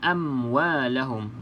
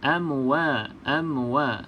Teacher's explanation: pastikan tidak ada lantunan ya sahabat-sahabat mim ni bukan Qalqalah